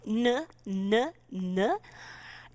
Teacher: start with N, tongue in the front of your mouth, N, N, N. It's right at the back of your teeth.